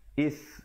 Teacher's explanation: Is hamzah baris bawah bertemu sa di hujung lidah. Is gitu. Jangan baca is. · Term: huruf sa